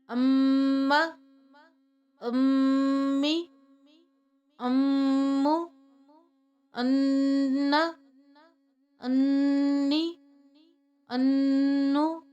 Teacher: میم مشدد اور نون مشدد پہ غنہ کرتے ہیں، یعنی آواز ناک میں لے کے جاتے ہیں۔